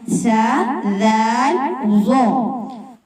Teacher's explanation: سا، ذال، ظا کا ایک ہی مخرج ہے، زبان کی نوک جب اوپر والے دانتوں کے کنارے سے لگے تو یہ تینوں حروف ادا ہوتے ہیں